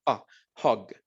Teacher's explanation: de acá verdad ustedes ven no es u es hug y el sonido de la u corta no es una u verdad sino suena como un Oh como que si fuera un golpe que viene del diafragma